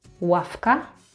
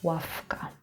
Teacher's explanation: v is voiced, but because it's next to k, it became voiceless